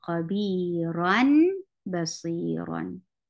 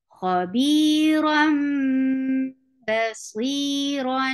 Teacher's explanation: But because of this rule of iqlaab, we will change the sound of tanween into meem, because we saw there is a ba following tanween